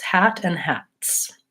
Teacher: My voice is not on, hat. Then when I add the S, hats. S is also voiceless. It stays voiceless